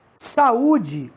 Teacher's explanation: Saúde, o U tem som oral